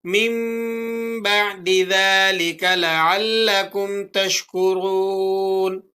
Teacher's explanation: اب اس آیت مبارکہ میں ثم عفونا عنكم من بعد، یہاں پر اقلاب ہو رہا ہے، نون ساکن اور اس کے بعد حرف با آ رہا ہے تو آپ یہاں پر اقلاب کریں گے، یعنی نون ساکن کی آواز کو میم سے تبدیل کر کے پڑھیں گے